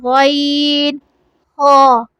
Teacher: غین، ہا آپ کے منہ کے حصے کی طرف سے ادا ہوں گے جہاں پہ آپ کی زبان کا اینڈ ہو رہا ہوتا ہے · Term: حرف حلقی